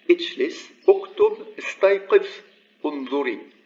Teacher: the vowel is maintained because it is at the beginning. And actually it's pronounced like a hamza